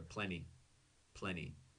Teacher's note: Americans almost never aspirate or blow out air when we pronounce a t in the middle of a word